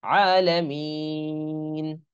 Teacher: কিন্তু মিন বলে যদি থামি তখন মদ্দে আরজি হচ্ছে, এজন্য তিন আলিফ টান হচ্ছে।